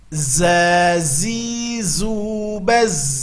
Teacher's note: Kalau tadi harus keluar ujung lidah, sekarang tidak. Ujung lidah nempelnya ke gusi bawah dan kedua gigi ditautkan. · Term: huruf za